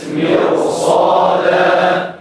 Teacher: فخم الراء لانها ساكنه وقبلها مكسور وبعدها حرف استعلاء غير مكسور